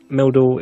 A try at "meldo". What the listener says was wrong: It's not Meldor. It doesn't have an R on the end. Meldu. Mel as in Melkor.